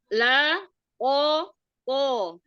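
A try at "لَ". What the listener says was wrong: Iya, la jangan a, jangan naik.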